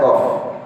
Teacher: Aqsal lisan, ya, aqsa, ya, maka di sana adalah di pangkal daripada lidah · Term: makhrajul qaf